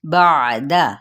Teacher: آئین کو وسط حلق سے ادا کرنا، دال کی زبر کو لمبا نہیں کرنا